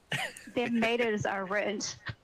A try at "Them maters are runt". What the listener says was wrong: Nope, you're trying to say ruined too properly. You gotta butcher it. It's runt. Them maters are runt.